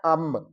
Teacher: اس نون کی آواز کو میم کی آواز میں بدل کر پڑھیں گے